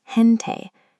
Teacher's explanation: The G is followed by an E, giving it the soft H sound.